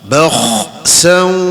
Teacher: huruf kha ni adalah huruf yang makhrajnya paling hujung, paling di atas rongga kerongkong, rongga kerongkong yang atas sekali, bahagian atas sekali.